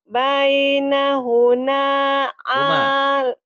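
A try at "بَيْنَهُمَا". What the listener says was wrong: Huma, bukan huna.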